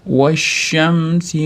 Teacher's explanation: Vashshamsi deganda shamsiya harfi kelganligi uchun, ya'ni tashtid bilan boshlanganligi uchun so'z, o'rtadagi alif ham, lam ham o'qilmay, shuning ichiga idg'om bo'lib kirib ketadi. Vashshamsi mana bu mana bunday bo'lib chiqqan turgan mana bu mim.